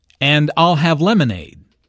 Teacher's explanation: stresses I'll and lemonade to emphasize her choice.